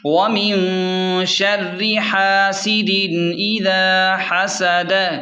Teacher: سین زیر سی، دال دو زیر دن. دال پر تنوین ہے، آگے حمزہ آنے کی وجہ سے یہاں غنہ نہیں ہوگا